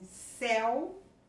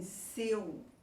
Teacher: em céu, um som aberto. Em seu, o som é fechado.